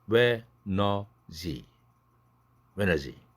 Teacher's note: 드가 날아가니까 when's he. he 할 때 h 날아가고 링크되고.